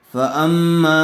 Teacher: فا، حمزہ میم زبر ام، فام، میم الف زبر ما، فاما، میم کو تھوڑا کھینچ کر پڑھیں گے اس لیے کہ زبر والے حرف کے بعد الف مدہ آیا ہوا ہے۔